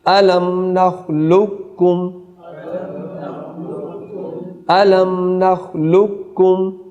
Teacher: آگے دیکھیے الم نخلق، بڑا قاف ساکن ہے اور آگے چھوٹا کاف متحرک ہے. تو یہاں جب ادغام متقاربین ہوگا تو چھوٹے کاف کی صفت پڑھی جائے گی، بڑے کاف کی صفت نہیں پڑھی جائے گی.